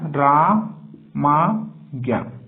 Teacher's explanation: अ का मेल हो रहा है आ से और होगा इसका दीर्घ ही रूप